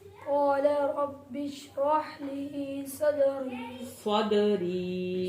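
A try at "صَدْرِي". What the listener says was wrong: सदरी दाल का कलकला करना है।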